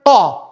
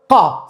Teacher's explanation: Ka edhe pse ka fetha e sipër lexohet ka sepse është shkronjë trashë